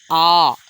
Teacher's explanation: आप आ जो है बोल के देखिए, आपका मुख सबसे ज़्यादा खुलेगा, बहुत ज़्यादा ओपन होता है। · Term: विवृत्त स्वर